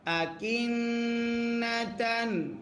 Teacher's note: নুনে যদি তাসদিদ হয় গুন্না করা ওয়াজিব হয়